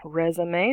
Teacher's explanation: and a resume three syllables resume stress on the first third there's that schwa in the middle res uh may long a sound on the end